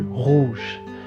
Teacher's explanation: Now the R's in French, they're slightly guttural.